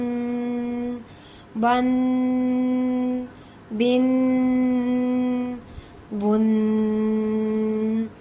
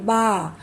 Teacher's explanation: جب ہم با ادا کریں گے تو ہم دونوں ہونٹوں کو جوڑ کر ملا کر ادا کریں گے